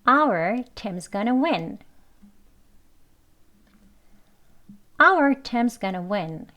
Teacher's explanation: 그래서 team is도요. 그냥 teams라고 발음되어지고 our 여기만 강조합니다. · 이 our만 강조되어집니다. 그리고 나머지는 빨리 말을 하지요.